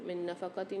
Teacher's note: نون ساکن کے بعد نون مشدد آ رہی ہے، یہاں پر ادغام مال غنہ والا قاعدہ ہوگا، غنہ کر کے پڑھیں گے۔ نفقتن، تا کے نیچے 2 زیر آ رہے ہیں، 2 زیر کی تنوین کے بعد الف آ رہا ہے حمزہ یعنی، یہاں اظہار ہلکی والا قاعدہ ہوگا، غنہ نہیں کریں گے۔